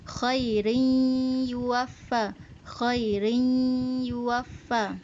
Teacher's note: Biar dengung gitu dengung dengan idgham bi gunnah. Idgham dengan dengung.